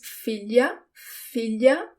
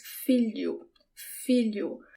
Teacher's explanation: The sound of the LH, it's not the tip of my tongue that touches the roof of my mouth. It's sort of the middle of my tongue. It's almost if I have ly in English instead of lh in Portuguese, but it's subtle.